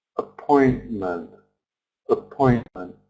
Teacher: Point is stressed, but the other two syllables have a schwa sound.